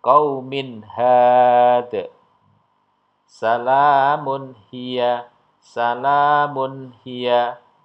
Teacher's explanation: nun sukun atau tanwinnya dibaca dengan jelas ya tidak mendenguk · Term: idhar halq